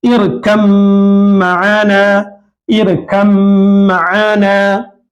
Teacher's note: اسی طریقے سے کم جو میں نے تحریر کیا، اس کی مکمل قرآن شریف میں اس طرح آیا ہے، اِرْکَم معانا، اِرْکَم معانا، تو ساکن حرف کے بعد میم متحرک حرف آ گیا، تو یہ ساکن حرف کو، یہ با کو میم سے ملا دیں گے اور با کی آواز نہیں آئے گی